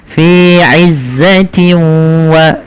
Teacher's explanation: masukkan nunnya atau suara bunyi nunnya ke huruf wau sehingga hilang suara nunnya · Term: idgam biguna